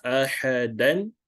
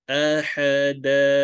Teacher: every time when we end an ayat that ends with the fathatain, we have to convert this fathatain into a fatha. So it becomes da. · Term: mad iwal